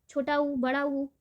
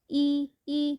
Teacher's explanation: छोटा ऊ बड़ा ऊ, ये जो होता है ना क्लोज होता है